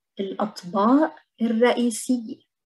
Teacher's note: طبق is a dish. We pronounce the قاف again as a glottal stop.